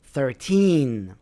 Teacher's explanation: Three is bigger than one. So, the stress is on the second part of the word.